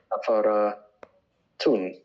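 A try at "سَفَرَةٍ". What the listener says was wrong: No, tun is Safaratin. The raw is not ra. It is actually raw. It's a little heavier. Raw. Safaratin.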